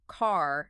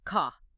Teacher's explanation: in standard British English, often that R is silent or becomes a vowel sound. So car sounds more like ka, Okay.